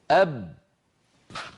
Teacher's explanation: هناك صوت وهواء محبوس يريد أن يخرج، ولكن الشفتين أغلقتا الطريق أمامه